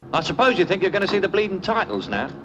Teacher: I'd say one of the reasons that Cockney is so difficult to understand is the linking. The words get very mushed together. There's not a lot of separation in there.